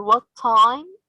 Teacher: what time we are stressing time because it's a content word